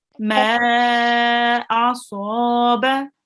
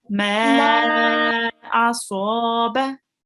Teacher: the ma carries the Mad al-Saghir. We have to make it a bit longer, okay? Make ma the longest